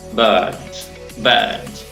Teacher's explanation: imaginen que este sonido es como una schwa, pero un poco más largo